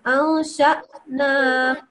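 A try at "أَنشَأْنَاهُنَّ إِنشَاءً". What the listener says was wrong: Yeah, but don't make it sound like a ayin, okay?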